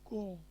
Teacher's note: আমরা যে বলি ক, এই ক এর সঙ্গে আর একটা অ লুকিয়ে থাকে। ক যোগ অ, এই দুইটা মিলে হয় কিন্তু ক।